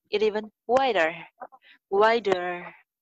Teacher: I thought my mouth was very big but इट told me टू open इट इवन वाइडर इट इवन इट का ट ई के साथ मिला देंगे